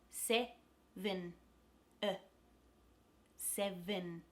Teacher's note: There's 2 E's in the word 7. The first is stressed, se, that's the short e sound. And the second E becomes a schwa. Se-vin, 7. So really just relax your mouth.